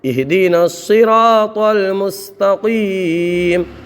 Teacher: قاف کو بھی پر پڑھیں گے، اس لیے قاف بھی حروف مستعلیہ میں